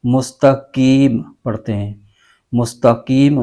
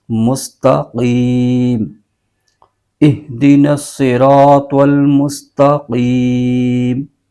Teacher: قوف کو اس کے مخرج کے زبان کی جڑ اور تالو کے نرم حصے سے ادا کرنا ہے